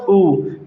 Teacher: ऊ ज्यादा नहीं खुलेगा मुंह, ऊ हल्के से होठ गोल होंगे बस